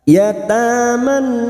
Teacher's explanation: Nun yang bertasdid kita denggungkan selama tiga harakat · Nisa bertemunya mat dengan hamzah dalam 1 kalimat mat wajib mutasil. 5 harokat kita samakan dengan sebelumnya